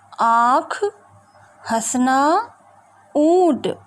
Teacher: अनुनासिक स्वर वे होते हैं जो स्वर मुख और नाक से बोले जाते हैं, जिसका सूचक चंद्र बिंदु होता है, जैसे आँख, हंसना, ऊँट।